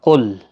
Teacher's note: قاف حروف مستعلیہ کا حرف ہے، پر پڑھنا ہے